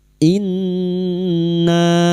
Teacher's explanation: Nun yang bertasdid gunna musyaddada kita dengungkan selama 3 harakat.